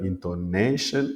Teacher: c'est sur l'avantdernière syllabe qu'il faut mettre l'accent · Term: l'accent tonique